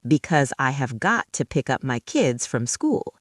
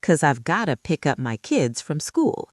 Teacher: Notice because becomes 'cause, got to becomes gotta, and pick up links to pick up.